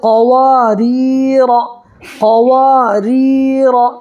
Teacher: اور یہاں پر بھی یا مدہ ہوگا، اس لیے کہ یا سکنی سے پہلے را کے نیچے زیر ہے تو یا مدہ ہوگا، اور یہ را کو باریک پڑھنا ہے اس لیے کہ را کے نیچے زیر ہے